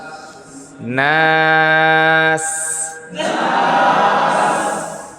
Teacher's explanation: সিনের উচ্চারণে বাঁশির মতন উচ্চারণ হবে